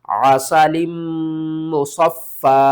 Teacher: وقف کی صورت میں یا کو بھی آپ نے ختم کر دینا ہے، فا کے اوپر جو دوسری زبر ہے اس کو بھی آپ نے ختم کرنا ہے، اور فا کے آگے الف لگا کر آپ نے اس کو پڑھنا ہے۔